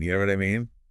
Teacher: And that rising intonation at the end is key. Turns it into a question.